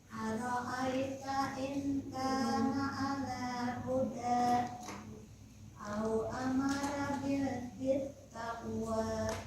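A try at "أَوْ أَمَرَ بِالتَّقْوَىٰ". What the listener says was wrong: Amaro, roknya tebal. Amaro bit taqwa. Roknya pendekan. Amaro bit taqwa.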